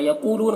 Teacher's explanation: यक़ूलून क़ाफ को पुर पढ़ेंगे, यहाँ पर वाव मद्दा है।